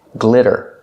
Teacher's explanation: The double T is pronounced like a fast D. Not glitter, but glitter.